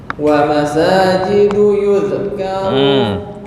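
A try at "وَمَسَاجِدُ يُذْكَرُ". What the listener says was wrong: Zal nggak boleh kol-kolah.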